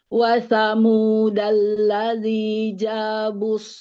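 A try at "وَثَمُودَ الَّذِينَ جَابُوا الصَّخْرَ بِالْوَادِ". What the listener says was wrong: Huruf na-nya ketinggalan, diulang.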